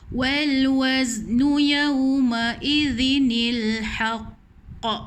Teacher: Haqq ni qalqalah akbar. Tahan sikit betul lepas.